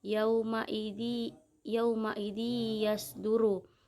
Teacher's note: idgham biguna karena ada tanwin bertemu dengan ya, cara membacanya masuk dengan mendengung